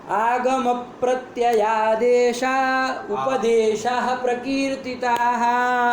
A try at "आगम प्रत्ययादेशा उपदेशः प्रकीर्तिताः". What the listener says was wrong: प्रत्ययादेश में कहाँ विसर्ग है? तो कहाँ विसर्ग बोल रहे हो?